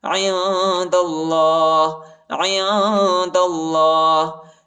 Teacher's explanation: دال کو لام کے ساتھ ملائیں گے اور اللہ کے نام کو موٹا پڑھیں گے